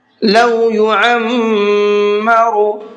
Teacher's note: عین کو بھی حلق سے نکالنا ہے اور میم کے اوپر تشدید ہے، یہاں پر غنہ کرنا ہے